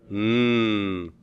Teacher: to partially assimilate in what way the Kappa is voiceless and the MU being a nasal is voiced that is it vibrates the vocal chords